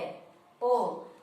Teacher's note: ये अर्ध समवृत्त वर्ण होते हैं, क्योंकि इसमें हमारा मुख थोड़ा सा फिर खुल जाता है